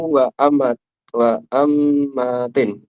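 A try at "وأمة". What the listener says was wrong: tasydid. Bighairi tasydid. Wa amati.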